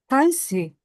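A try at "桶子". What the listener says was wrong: eh ini pakai O, jadi bacanya pakai O. Tong,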